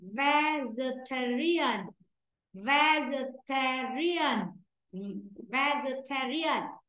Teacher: Vì vậy trong âm nó rơi âm 3. Còn âm thứ nhất là âm nhẹ.